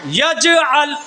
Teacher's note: जीम साकिन आई, इसलिए आवाज़ अपने मखरज से टक्कर खाकर अलग हो जाती है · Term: कलकला